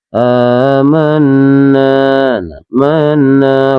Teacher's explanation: gunnah musyaddadah ditekan harus dua harokat